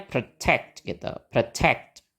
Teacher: Oke, sama juga polanya kita pakai nana tadi. Dan suku kata yang pertama nggak di stress, jadi kita pakai betul, pakai schwa.